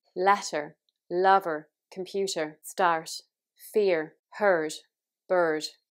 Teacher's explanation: Southern Irish is rotic which means that basically you pronounce every r that you see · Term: rotic r